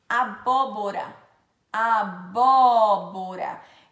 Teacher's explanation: O agudo é um acento aberto, ele faz com que o som fique aberto.